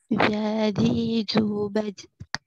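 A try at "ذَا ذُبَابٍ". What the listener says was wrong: Nyasar ke huruf jim itu, kurangi. Kan kalau nyasar ke huruf jin, zalnya jadi mantul. Saya jelaskan sekali lagi, ya saya ingatkan sekali lagi, huruf zal juga termasuk tadi ujung lidah bertemu ujung gigi seri atas di sini. Tempelin dulu. Za, tuh. Za, zi, zu, bad.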